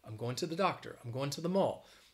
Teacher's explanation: people like in the us will overwhelmingly say and they use they say to with the schwa sound